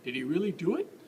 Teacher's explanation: your voice kind of goes up at the end all that pitch is coming out